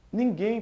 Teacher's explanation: tem a sílaba tônica na última Ou seja é uma oxítona e não há paroxítona é esse